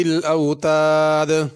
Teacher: ذی میں ذال ہے، اس کو زا نہ پڑھا جائے، اوتاد کی دال پہ قلقلہ ہوگا۔